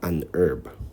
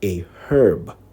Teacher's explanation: in most american accents the h in herb is silent so americans usually say an herb in many british accents the